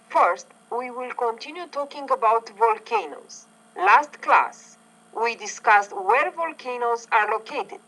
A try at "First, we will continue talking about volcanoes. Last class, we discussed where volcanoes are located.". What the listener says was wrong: Nice. So you're putting stress on volcanoes in the first sentence because it's new information.